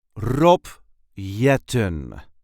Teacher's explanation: There is a light emphasis on the first syllable of his last name.